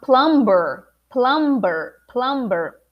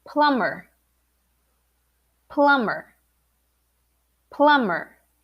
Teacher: every time you have the m b uh you're not gonna pronounce the b